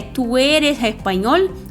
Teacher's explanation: Às vezes tem o S que sai um som meio aspirado, parecido com R, mas se falar "tu eres espanhol" também não tem problema nenhum, porém o E e o O são mais fechados, não são abertos que nem no português